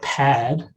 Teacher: With pad, you get both aspiration and vowel lengthening applying, and so you get pad as the output.